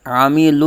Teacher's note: عین کی آواز حلق کے درمیان سے